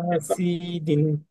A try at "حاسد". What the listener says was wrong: সি টান নাই তো একালিপ ওয়াও।